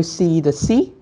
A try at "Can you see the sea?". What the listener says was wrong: Nhưng mà chú ý là cái tông giọng thì lại quên mất phát âm chuẩn âm y dài. Can you see the sea?